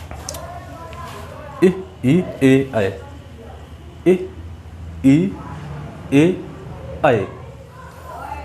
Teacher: इन 4 स्वरों को बोलते समय जीभ का आगे का भाग काम कर रहा है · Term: अग्रस्वर